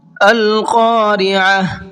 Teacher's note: شروع میں بڑا قاف ہے، اس کو پر کر کے پڑھیں گے